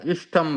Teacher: दंत्य स का मूर्धन्य श हो जाएगा और त वर्ग का ट वर्ग हो जाएगा। तो ऐसा समझ लीजिए कि मूर्धन्य श और ट वर्ग जो है वो बहुत शक्तिशाली है, वो सामने वाले दंत्य श को मूर्धन्य श बना देता है और त वर्ग को ट वर्ग बना देता है।